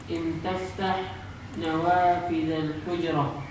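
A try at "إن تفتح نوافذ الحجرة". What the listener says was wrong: Ulang. Nadanya enggak betul. In taftah nawafidhal hujrah.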